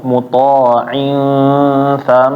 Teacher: dengung muta'in tham itu ditahan, jangan langsung pindah